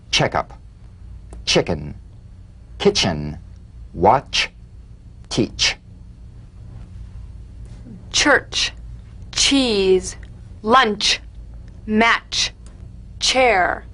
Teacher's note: place the tongue firmly on the upper gum ridge for the t then crash through gently but sharply with the sh